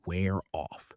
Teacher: The consonant sound at the end links right into the vowel of the preposition. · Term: linked sound blocks